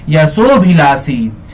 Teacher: 92 number सवाल है, यशोभिलाषी, यशः धन अभिलाषी, यशः धन अभिलाषी, यशोभिलाषी। यहाँ पे विसर्ग जो है ओ का उच्चारण ले लेता है